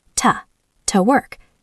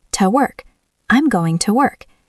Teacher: Listen to the word to. It is barely there.